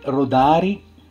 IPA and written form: roˈdari (Rodari)